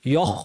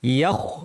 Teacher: ওয়ামা ইয়াখ বলার সময় ইয়া পাতলা, খ ভারী